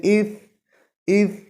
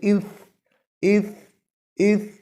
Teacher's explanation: اس میں آواز تو جاری ہے، سانس تو جاری ہے لیکن آواز میں پستی آ رہی ہے کمزوری کی وجہ سے